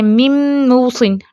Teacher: نون ساکن کی تو اپنی کوئی آواز نہیں آئی، صرف میم کی آواز ہے، یہ ادغام تام ہے، ٹھیک ہے، مرجنگ، کمپلیٹ مرجنگ ہے۔